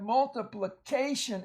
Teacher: I want to emphasize that A right there is long at the end of a syllable. Usually the A will be long in front of the tion.